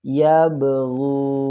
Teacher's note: huruf ba-nya itu memantul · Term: qalqalah sugro